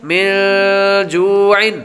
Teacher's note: نون ساکن کے بعد جیم حروف اخفا میں سے آ رہا ہے تو غنہ کریں گے